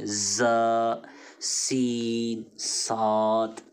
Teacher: جو تیز سیٹی کی طرح آواز نکلے گی وہ 3 حروف ہیں، اور ان کو حروف صفیریہ کہتے ہیں، ز، سین، صاد۔